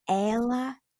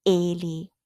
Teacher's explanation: the word for ela, like she, it's with an open E, like ela. But the word for he, ele, then it's closed. So ela, ele.